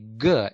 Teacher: we practically push the back of our tongue against the velum that's how we form this practically stop that's why they are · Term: stops or plosives